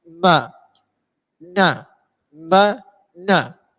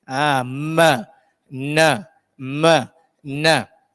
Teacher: Dia kena buka dan kena ada rongga, kena ada bunyi rongga hidung tu.